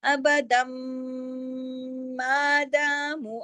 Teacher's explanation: اب میم مشدد کے اوپر غنہ بھی ہوتا ہے